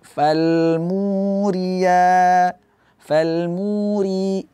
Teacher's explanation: Fa tetap dibaca tipis Fa dibuka mulutnya